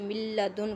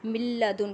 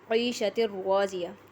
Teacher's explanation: جب نون ساکن اور نون تنوین کے بعد حروف یرملون میں سے لام اور را میں سے کوئی حرف آ جائے تو وہاں ادغام بلا غنہ ہوگا۔ ادغام تو ہم کریں گے کہ ایک حرف کو دوسرے کے ساتھ ملائیں گے، لیکن غنہ نہیں کریں گے۔ جیسے من لدن کا، یہاں دیکھیں من لدن کا، اس میں آواز ناک کی ہڈی میں نہیں جا رہی۔